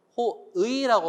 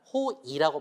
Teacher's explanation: 호의라고 발음하지만 호이라고 발음해도 괜찮아요